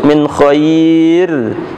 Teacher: Ra-nya berkasrah. Kalau kita waqaf harus tipis, min khair, itu tipis.